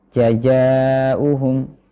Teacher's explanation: Kemudian yang terakhir mengucapkan huruf zai seperti huruf jim atau huruf ya. Jadi yang dinaikkan pangkal tengah lidah naik ke langit-langit atas, maka ini menyebabkan suaranya mirip dengan huruf jim.